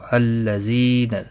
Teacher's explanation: زی یا مدہ ہے، 1 الف کے برابر کھینچ کر پڑھیں گے